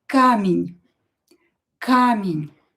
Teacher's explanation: E not stressed will be pronounced as i.